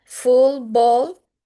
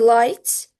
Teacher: When l comes like in light, it's a clear L. When L comes before a consonant or at the end of a word, like in full, ball, it's a dark L.